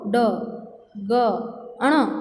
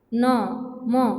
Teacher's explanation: જે વ્યંજનો પોતાના સ્થાન ઉપરાંત નાકમાંથી બોલાય તેને અનુનાસિક વ્યંજન કહેવાય છે